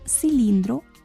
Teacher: el acento está en la sílaba lin